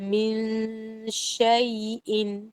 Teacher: آپ نے غنہ بغیر وائبریشن والے غنہ کو کرنا ہے، شین کی طرف اپنی زبان اور ہونٹوں کو رکھنا ہے، اور پھر آپ نے بولنا ہے من شیء۔